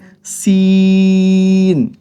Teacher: সিন বলার সময় আমাদেরকে তিন আলিফ পরিমাণ টানতে হবে